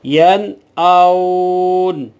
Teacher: اسی لیے ین آؤن، نون یہاں ظاہر ہو رہی ہے، اسی کو اظہار کہا جاتا ہے، یہاں ہم غنہ نہیں کریں گے